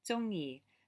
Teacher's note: So it's like a high falling and then the middle tone.